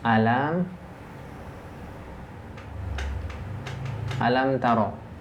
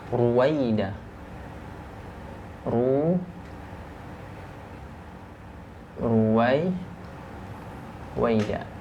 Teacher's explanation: rnya yang pertama Ya ketika dia berharakat fathah alam ro ini huruf rnya diangkat pangkal lidahnya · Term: dibaca tebal